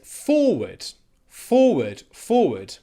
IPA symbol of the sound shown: ə